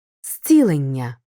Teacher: з у префіксі перед наступним глухим вимовляємо як с